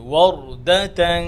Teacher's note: এখানে র মোটা, ওয়ার, আর ওয়াও ঠোঁট গোল করে